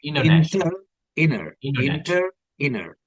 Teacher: You don't need to pronounce T sound